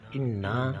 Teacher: قالو، حمزہ زیر ای، حمزہ زیر نون ان، نون زبر الف نا، انا، اور نون مشدد ہے، غنہ کیا جائے گا۔